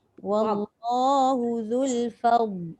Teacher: Jaga fa jangan jadi fo.